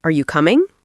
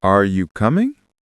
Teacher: My voice goes up at the end. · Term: intonation